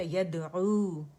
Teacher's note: اور یہاں دال کا قلقلہ کریں گے سافٹ والا، یدعو. واو مدہ ادا کریں گے.